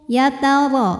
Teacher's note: ro dihukumi dengan tafkhim karena ro berharakat di atas fathah maka cara bacanya ditebalkan